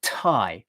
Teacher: If you go tie like that, there's all that breath, and it's a bit too much effort.